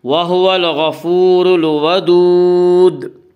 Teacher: اس کا قاعدہ ہے کہ را کے اوپر زبر اور پیش آئے تو را کو پر پڑھا جائے گا، را کے نیچے زیر آئے تو را کو باریک پڑھا جائے گا، یا را کے اوپر پیش ہے اس لیے را کو پر پڑھیں گے